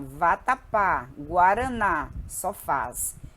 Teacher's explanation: É uma palavra cuja sílaba tônica é a última. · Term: palavra oxítona